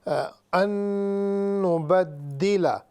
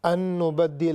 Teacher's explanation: اس میں غنہ ہے، اب غنے کو 3 حرکات جو ہے اس کو غنے میں ہم لمبا کریں گے